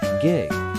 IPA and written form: ɡɪɡ (gig)